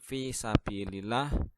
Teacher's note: ada lam jalalah yang didahului kasrah maka lamjalalah harus dibaca tipis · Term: tarqiq